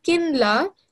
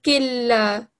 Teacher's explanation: we didn't say the noon. We, instead of joining the kaf with the noon, we literally just joined it with the lam, because the lam is stronger.